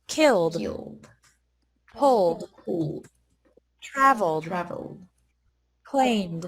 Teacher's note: e d is pronounced like d after verbs ending in an l m or n sound